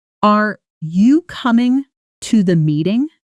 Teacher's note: Notice the pitch lifting upward on meeting. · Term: intonation